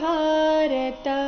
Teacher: ಭಾರತ ಇಲ್ಲಿ ಭ ಮಹಾಪ್ರಾಣ ದೀರ್ಘ